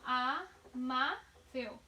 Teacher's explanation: A mais forte é má. Amável. É a penúltima.